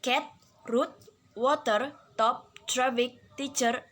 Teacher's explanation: The tip of the tongue is in contact with the alveolar ridge, and the air comes out of the lungs through the oral cavity as it is stopped by the articulator. T is described as voiceless alveolar stop.